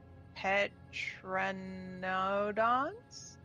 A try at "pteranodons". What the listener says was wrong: The P is silent. Yeah, pteranodons.